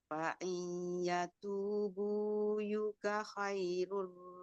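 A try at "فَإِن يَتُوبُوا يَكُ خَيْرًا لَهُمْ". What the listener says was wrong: Yaku, terbalik. Yaku. Khairan lahum. Ra.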